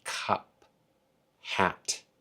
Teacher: neither of the P or the T have a voiced sound on them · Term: voiceless sound